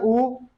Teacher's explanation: पश्च स्वर जो है, पश्च का मतलब यह है जो गले से, जो हम कहते हैं बड़ा आ, तो आवाज हमारी डायरेक्ट पीछे से निकल आती है, हलक से ही, ठीक है। तो उसे क्या बोलते हैं हम, जैसे ऊ तो पीछे डायरेक्ट आ रहा है, तो इसी को बोलते हैं हम पश्च स्वर, ठीक है।